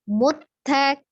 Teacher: Muttak ya, taknya itu sifatnya dia hamas, ada udara yang mengalir ketika mengucapkan huruf ta